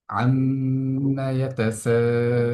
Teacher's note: লুন শব্দটির মধ্যে আমরা তিন আলিফ পরিমাণ টেনে পড়ছি। তিন আলিফ পরিমাণ টান কেন হবে, এটার কারণ হলো যে আমরা জানি একটা নিয়ম আছে মাদ্দে আরজি।